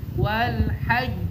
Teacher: Jadi tekan dulu baru keluar qalqalahnya. Selesaikan urusannya dengan tasdidnya baru keluarkan qalqalahnya.